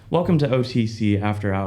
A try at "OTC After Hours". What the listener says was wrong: Not OCC, OTC. It sounded like C. You got to enunciate into the microphone.